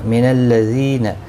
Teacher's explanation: زی یا مدہ ہے، 1 الف کی مقدار کے برابر کھینچ کر پڑھیں گے